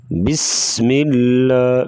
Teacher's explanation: سین سیٹی کی آواز نکالیں گے سختی سے